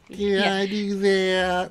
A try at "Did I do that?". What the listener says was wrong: Higher. Get rid of some testosterone, man.